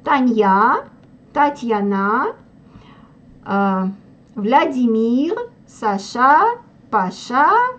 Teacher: ударение ставил на последний слог